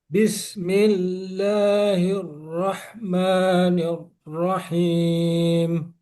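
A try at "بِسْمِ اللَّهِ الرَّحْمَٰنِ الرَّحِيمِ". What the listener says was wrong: Kalau bisa rnya jangan ditahan, Pak.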